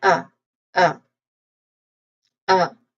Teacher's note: we say first a relaxed ah sound like awah sound.